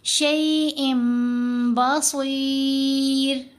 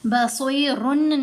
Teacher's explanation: صاد کے نیچے زیر آنے کی وجہ سے را کو باریک پڑھنا ہے کیونکہ را ساکن پڑھی جا رہی ہے